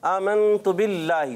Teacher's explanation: ता पर पेश है, खींचना नहीं · नून साकिन है तो थोड़ा सा गुन्ना भी करके जाए